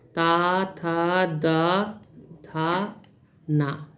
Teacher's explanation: हमारी जीभ इन अक्षरों को बोलते समय दांतों को स्पर्श करती है